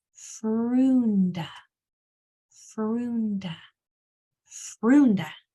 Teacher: the F is a voiceless sound, only air. R, oo, n, d, Frunda.